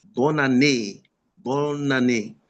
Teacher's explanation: You see N-A. There's a liaison with N and A.